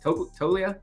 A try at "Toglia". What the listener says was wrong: Toglia, yeah. Got to pronounce the G a little bit.